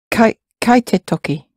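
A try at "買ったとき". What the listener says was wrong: And that sounds like write. And be careful that we're really pronouncing the ta form, and we're trying to distinguish between te and ta.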